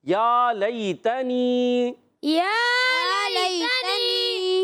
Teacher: یا لئی تنی، یا کھڑی حرکات ایک الف کھینچنا ہے. لئی یا لین ہے، نرمی سے ادا کریں گے. تنی تا پر زبر نہیں کھینچنا.